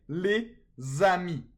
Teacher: Because here there is a liaison. Okay, the S in les is usually silent, but in a liaison it's pronounced like a Z. Okay, but that only happens when it's followed by a vowel sound.